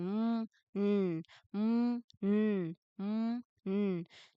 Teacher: You should feel the vibration in your lips for the sound